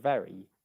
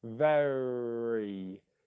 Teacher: So in the word very, the ve is stressed, ver. That's the stressed syllable. You've got the R at the end of that first syllable, ver.